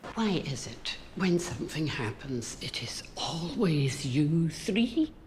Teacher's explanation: Scottish accent, the shortening of the vowels